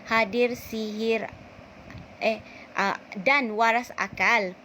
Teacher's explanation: asonansi, perulangan bunyi vokal A